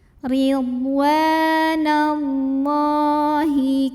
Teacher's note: Maka cara bacanya lam yang barisnya fathah panjang ini dipanjangkan 2 harokat saja. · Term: mad asli atau mad tabi'i